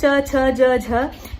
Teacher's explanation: जब वो हवा निस्वृत हो रही है, निश्वास जब निकल रहा है, तो वहां पर हल्का सा संघर्षण भी हो रहा है। तो जो च वर्ग जो है, च, छ, ज, झ, ये स्पर्श संघर्षी व्यंजन कहलाते हैं।